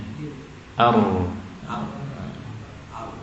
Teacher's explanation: Sehingga ro itu yang fasih 3 getarannya ya. 3 ar, yang tengah-tengah 2 atau 1 ar. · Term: takrir